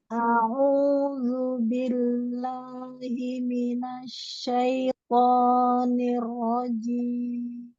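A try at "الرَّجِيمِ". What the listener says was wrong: Ar-rajim, rohnya dilamakan, tasdid.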